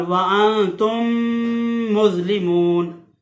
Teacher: تو ادغام شفوی کا قاعدہ اس طرح سے ہے کہ جب بھی میم ساکن کے بعد دوسری میم آ جائے، یہ میم ساکن کے قواعد ہیں، خالی میم کے قواعد نہیں، یہ میم ساکن کے، میم ساکن کے بعد جب بھی دوسری میم آ جائے تو وہاں جو ہے ادغام شفوی ہوگا، یعنی کہ میم کو میم میں ملا کر غنہ کر کے پڑھیں گے